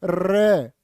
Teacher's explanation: जीभ कांप जाएगी तुम्हारी र को प्र कंपित भी बोलते हैं और लुंठित भी कहते